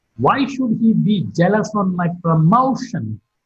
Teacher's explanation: Promotion is marked with a falling tone.